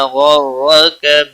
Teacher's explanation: غائن اور را دونوں پر پڑھے جائیں گے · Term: حروف مستعلیہ